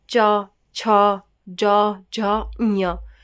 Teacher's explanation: च वर्ग कहां से बोला जाता है? तालु से। इट मींस तालव्य बोलते हैं।